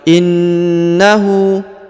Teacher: huruf na berharokat tasdid, maka ditahan dan ditekan 2 harokat. Lalu kemudian di depannya huruf hu berharokat u terbalik.